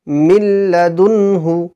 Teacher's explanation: দাল দুই পেশ দুন মিল্লাদুন হা পেশ হু মিল্লাদুন হু এখানে নুন সাকিন আমরা পড়লাম ঠিকই কিন্তু নুন বাতিল হয়েছে হয়ে গেল নুনের কোন আওয়াজই আসলো না · তানভীন অথবা নুন সাকিনকে বিনা গুন্নায় তাড়াতাড়ি পড়তে হবে এবং মিলিয়ে পড়তে হবে লামের সাথে মিলিয়ে পড়তে হবে যদি তাসদিদ নাও থাকে লামের উপর তবুও আমাকে নিজেকে তাসদির দিয়ে · তানবিন অথবা নুন সাকিনের পরে যদি লাম চলে আসে, তানবিন অথবা নুন সাকিনের পরে যদি লাম আসে, তবে তানবিন অথবা নুন সাকিনকে বিনা গুন্নায় তাড়াতাড়ি পড়তে হবে এবং মিলিয়ে পড়তে হবে, লামের সাথে মিলিয়ে পড়তে হবে। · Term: ইদগামে লাম